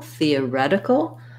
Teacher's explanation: So theoretical, we have stress on the ret syllable, theoretical.